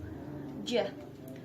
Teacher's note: And the last is j. J include place of articulation palatal and manner of articulation approximant